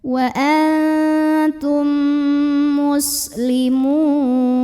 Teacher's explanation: Lalu ada idgham mimi karena mim sukun bertemu dengan mim, maka bacanya masukkan mim yang sukun ke mim yang hidup disertai dengungan. Nah, ini juga boleh disebut dengan idgham mutamatsil lain ya, karena 2 huruf yang sama persis bertemu di mana huruf pertama sukun, huruf kedua berharokat. · Mad tabi'inya waw sukun didahului dhammah, huruf yang disukunkannya nun. Maka dibaca panjang mimnya, boleh 2, boleh 4, boleh 6 harokat asal konsisten dalam sekali bacaan. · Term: mad arid li sukun